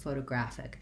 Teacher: Short, short, long, short, photographic. So that first O says O, the next O says schwa, like a, and then lastly I have my unstressed ick at the end. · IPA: /ˌfoʊtəˈgræfɪk